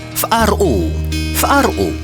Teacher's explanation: Deux glottales. Accentué sur ro.